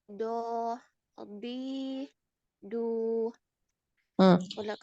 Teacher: tebal dinaikkan pangkal lidahnya naik Ukhti ee lidah bagian belakang tuh dinaikkan